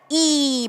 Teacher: 이 하면 혓바닥이랑 위 입천장이 닿죠. 그러니까 이나 반모음 이는 경국의 부분이 닿는 그런 자음이에요.